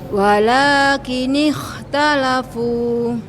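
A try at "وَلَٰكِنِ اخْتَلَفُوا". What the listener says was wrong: Taib. Barakallahu fiik. Mantap Bu.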